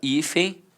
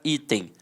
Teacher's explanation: Observe que ambas são paroxítonas terminadas com o som de em e ambas começam com som de i